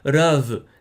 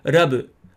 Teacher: they would pronounce the V as a B. That actually happens quite a lot.